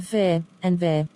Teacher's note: the teeth meets bottom lip